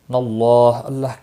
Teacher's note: اللہ کے لام کے پچھلے حرف کے اوپر زبر ہے اس لیے اللہ کا لام موٹا پڑا جائے گا